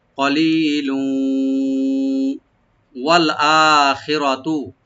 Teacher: লামের মধ্যে তানবিন আছে এবং পরে ওয়া আসতেছে, এখানে ইদগাম উইথ গুন্না হবে